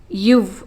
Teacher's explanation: கீழ் இதழும் மேல்வாய்ப்பல்லும் இணைவதால் பிறக்கும் எழுத்து